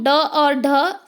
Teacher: ड और ढ, ये दोनों उत्क्षिप्त व्यंजन कहलाते हैं क्योंकि इनके उच्चारण में जीभ पीछे की ओर मुड़कर झटके के साथ सामने गिरती है।